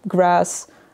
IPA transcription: græs